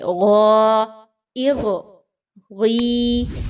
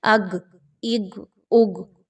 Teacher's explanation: اب یہاں پر major mistake کیا ہوتی ہے اسٹوڈنٹس کی تلاوت کے دوران کہ وہ غین کو گاف کی ساؤنڈ کے ساتھ ملا رہے ہوتے ہیں